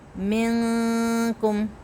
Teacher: اب میں جیسے پڑھوں گی منکم، اب میں نے من کو باریک کیا ہے، منکم منہ کو بھر کے نہیں پڑھا. اگر میں پڑھوں گی منکم تو ہو جائے گا غلط، کیونکہ آگے جو کاف ہے وہ الگ، اس کی اپنی صفاتیں الگ ہیں.